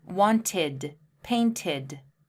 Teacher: Well wanted has an extra syllable. It's want-ID. The ID adds an extra syllable at the end.